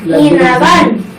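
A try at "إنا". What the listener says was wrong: ইনারান। দেখছো, একদম ভাগ করে বলে ফেলে। ইনারান।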